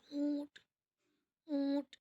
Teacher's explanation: اس میں نون ہے، وہ ہمارے ناک سے نکل رہی ہے